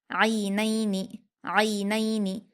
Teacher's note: عین پر یائلین ہے، اس کو ہم معروف آواز کے ساتھ جلدی پڑھیں گے